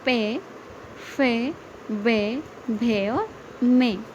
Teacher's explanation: पे वर्ग का उच्चारण स्थान है ओष्ठ, ओष्ठ यानी कि होठ।